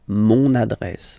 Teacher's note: you can hear now this little link, so you've got to pronounce this N